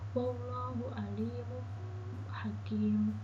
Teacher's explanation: Pada lafal alimun, huruf lamnya bertanda kasroh dan bertemu dengan huruf ya mati, maka lam tersebut dibaca panjang.